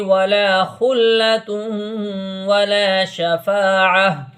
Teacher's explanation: اس گول تا کو ہا سے بدل دیتے ہیں. عین ہا زبر آہ، اس طریقے سے پڑھیں گے.